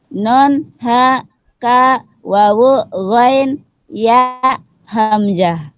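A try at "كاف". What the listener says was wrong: Kaf, bukan ka.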